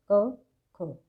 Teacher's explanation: आप बोल करके देखें तो आपको पता चलेगा इसमें हमारा जो कंठ है वो ज़्यादा सक्रिय रहता है बोलते टाइम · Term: कंठ ध्वनियाँ